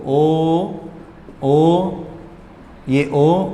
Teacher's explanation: इस ओ की जो ध्वनि है इसको आप तीन बार खींचो, ओ, ये ओ और ये मैं, इसे कहते हैं हम प्लुत स्वर।